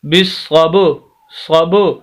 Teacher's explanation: آواز کو ہلا رہے ہیں، با کی آواز کو ہم ہلا کر پڑھیں گے، اسی کو قلقلہ کہا جاتا ہے